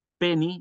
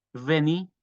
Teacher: en esperanto es bilabial bilabial porque se pronuncia con ambos labios generando una especie de pequeña explosión cierto la podríamos asimilar a la p mientras que la v es labio dental cierto con un pequeño zumbido · la v es labio dental cierto con un pequeño zumbido semejante a la a la F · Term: la distinción Bo vo, la distinción bo-vo